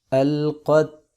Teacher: تا پہ کلکلہ نہیں کریں گے